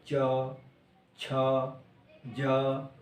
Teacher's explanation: च का उच्चारण करें तो जीभ तालु को जाके टच करती है